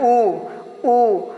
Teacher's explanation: ऊ बोलने में हमारा ओंठ गोलाकार हो रहा है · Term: वृत्तमुखी